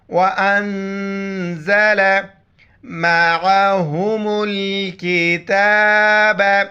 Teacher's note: عین کو گلے سے کریں گے، میم کو لام کے ساتھ ملائیں گے.